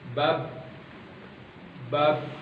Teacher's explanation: itu dengan cara mempertemukan bibir atas dan bibir bawah